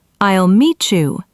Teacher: The T and Y combine to make a ch sound. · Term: assimilation